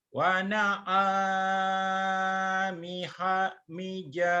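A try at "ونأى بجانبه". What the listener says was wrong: Bija, bukan ni nih. Bi.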